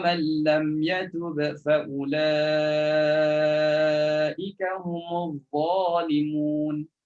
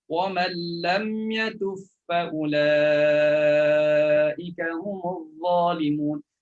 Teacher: Atau idgham, jangan bunyi qalqalah. Masukkan ba dalam fa, letakkan sabdu pada fa.